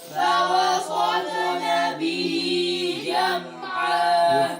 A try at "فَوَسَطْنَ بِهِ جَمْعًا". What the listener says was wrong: فوسن سين صوت नहीं करना فوسطن به جمعا